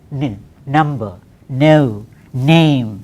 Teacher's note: It is an alveolar sound. Tip of the tongue should touch the alveolum, teeth ridge.